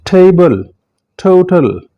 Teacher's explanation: दांतों की जड़ और उसके थोड़ा सा पीछे जाकर आपकी जुबान की नोक टच करेगी।